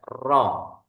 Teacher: ro ini, takrir, suaranya bergetar sekali